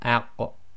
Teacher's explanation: it's a very slight echo, and it's only the sound made of releasing the two parts of articulation. So you don't overdo it like ah, or overemphasizing, because then you may end up making the qaf sound as if it's got a fathah on it.